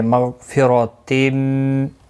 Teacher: غین مستعلیہ ہے، پر پڑھا جائے گا، را زبر کی وجہ سے پر پڑھا جائے گا